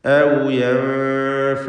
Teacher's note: യൻഫഊനകും എന്നതിൻ്റെ അന്ത്യത്തിലുള്ള സാക്കിനത്തെ മീമിനെ ഇൽഹാർ ഷഫവി നൽകി മണിക്കാതെ വെളിവാക്കണം